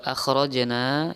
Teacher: dibaca Qalqalah sugro memantul sedikit